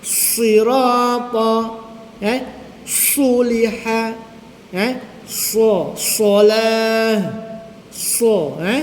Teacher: Ha jadi sad huruf safir berdesirannya kuat sa berbanding dengan hams anginnya kecil eh.